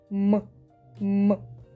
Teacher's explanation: М- дзвінкий, сонорний, носовий та твердий.